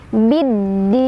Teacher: Cara bacanya alif lamnya tidak dibaca, jadi kita lewat, kita langsung idghamkan atau kita langsung masukkan ke huruf dal ya. Biddin. Din ada mad arid li sukun, karena ada mad tabi'i bertemu dengan huruf hijaiyah yang disukunkan karena waqaf. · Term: alif lam syamsiyah